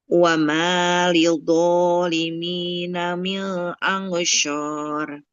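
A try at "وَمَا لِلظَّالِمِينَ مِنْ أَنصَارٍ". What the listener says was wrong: Nggak boleh min angsyur ya. Huruf shad jangan jadi shin. Nah, dia mirip sin ya. Tempat keluarnya kayak sin. Sa, si, su. Nah, sekarang huruf shadnya. So, si, su.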